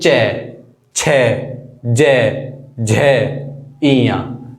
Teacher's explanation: जब हम इन्हें बोलेंगे तो हमारी जीभ जो है तालुव्य में टच होगी। तालुव्य यानी कि ये हमारे जीभ के ऊपर वाला हिस्सा।